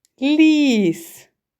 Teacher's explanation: перший звук ль приголосний м'який другий звук і голосний третій звук с приголосний твердий звук і ми позначимо літерою і